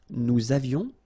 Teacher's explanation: little liaison, final S not pronounced